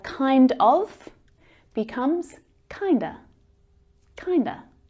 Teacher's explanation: When of gets reduced, it reduces down to the schwa.